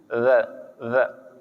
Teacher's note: Huruf Dza keluar di ujung gigi